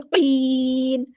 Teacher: زیر صادقین کی نہیں کرنا, باریک نہیں پڑھنا قاف کو. قاف ہمارا ہیوی ہے.